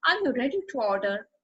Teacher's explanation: notice the rising intonation on order